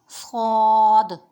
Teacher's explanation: یہ موٹا حرف بھی ہے اور یہ سیٹی والا بھی ہے، تو اس کو ہم پر پڑھیں گے، صاد۔ اس کا مخرج یہ ہے کہ زبان کی نوک اور دونوں دانتوں کے اندرونی کنارے سے ادا ہوگا، صاد۔